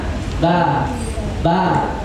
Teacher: Tidak boleh hamas kalau ba, kan nggak boleh ya. Harusnya ditahan. Ba, tertahan.